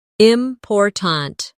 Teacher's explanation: in the word important, we stress the second syllable, important. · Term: word stress